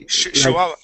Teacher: So that CH is really more of an SH sound.